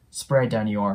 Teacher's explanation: on▁の▁n▁で終わって、子音足す母音っていうのは基本的に音がリンキングするんですけど、y▁の音もリンキングする傾向があります 。なので、on▁your▁って分けるよりも▁on▁your▁ってくっつけてあげるとより自然になりますね。なので▁spread▁on▁your▁って感じで聞こえます。で、最後の▁bread。これもね、先ほどの▁spread▁ができてると意識できると思うんですけど、また▁R▁の音ですね。これも先ほど出てきたのを意識してもらって▁red▁bread▁とね、発音してもらえたらと思います。もう一度発音すると▁What▁do▁you▁spread▁on▁your▁bread?▁こん